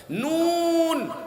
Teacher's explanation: নুন উচ্চারণ করতে নাকের মধ্যে ঝ্যানঝ্যান করে